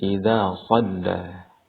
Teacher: di sana ada bacaan panjang dua harakat pada kata idza. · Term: mad tabi'i